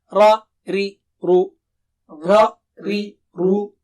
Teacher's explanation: By the way, ri is thin. Ra and ru are thick.